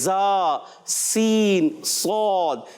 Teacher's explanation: اسی طرح ہم ادا کرتے ہیں زا، سین، صاد. اس کا مخرج ہوتا ہے زبان کی نوک، بالکل باریک نوک. اور جب دونوں دانت ملتے ہیں، جی ہاں، اور قریب آ جاتے ہیں یا ملا لیں، اور جب زبان کی نوک بالکل قریب آتی ہے، اچھا زبردستی نہیں لگانا.